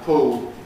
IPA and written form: pʊl (pull)